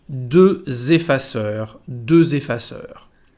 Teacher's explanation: tenemos aquí una liaison entre la X final y la siguiente palabra porque empieza con una vocal, así que vamos a decir deux effaceurs, deux effaceurs.